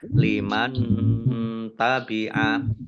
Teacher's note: nun sukun bertemu dengan huruf ta, bacaan ikhfa dibaca samar-samar